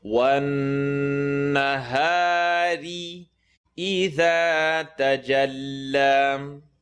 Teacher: the noon shadda has to make the full nasal sound in the nose